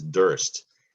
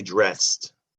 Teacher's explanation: There's an R-controlled vowel sound there in the beginning of this word. You got to watch those R's.